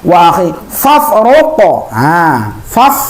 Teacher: fa itu biarpun hidup ataupun mati maka ada mempunyai sifat hames. Hames itu adalah keluar anginnya